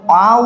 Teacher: আ উচ্চারণের সময় জিহবা কোথায় আছে মাঝখানের দিকেই আছে বা জিহবা এক জায়গাতেই স্থির থাকে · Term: মধ্য